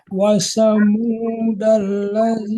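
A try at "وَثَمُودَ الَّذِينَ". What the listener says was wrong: Itu huruf tha. Watha, tha.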